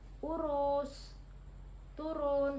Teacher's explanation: vokal U tinggi bawah belakang dengan posisi mulut semi tertutup. Nah, vokal U ini menghasilkan contoh kata seperti urus, turun, seperti itu.